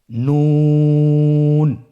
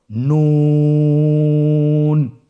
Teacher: নুন হরফটির উচ্চারণ স্থান হচ্ছে জিহ্বার আগা তার বরাবর উপরে তালুর সঙ্গে লাগিয়ে উচ্চারিত হয়। আপনারা স্ক্রিনে দেখতে পাচ্ছেন জিহ্বার আগা তার বরাবর উপরে তালুর সঙ্গে লাগিয়ে উচ্চারিত হয়।